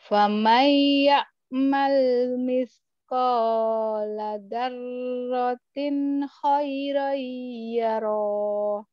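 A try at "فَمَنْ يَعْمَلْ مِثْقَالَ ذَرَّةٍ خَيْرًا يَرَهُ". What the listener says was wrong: pendek ya itu enggak ada panjang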